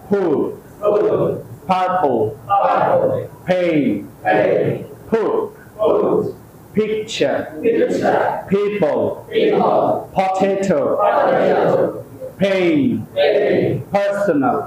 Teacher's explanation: সজোরে বাতাস বের করেন